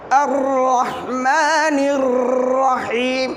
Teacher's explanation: তাকরারের হরফটি তার মাকরাজ থেকে উচ্চারণের সময় বারবার উচ্চারিত হতে চায়, তবে বারবার হতে দেয়া যাবে না